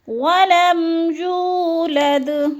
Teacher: واو مدہ کو 1 سے 2 الف کے برابر ہم نے حرکات کے برابر کھینچ کر پڑھنا ہے